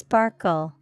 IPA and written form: ˈspɑːrk(ə)l (sparkle)